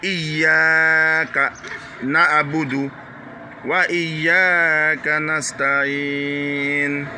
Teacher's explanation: non seulement le Y doit être dur, mais le A aussi doit être une voyelle longue.